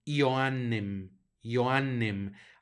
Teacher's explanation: hacemos el énfasis para que se note la doble n y la J la pronunciamos como y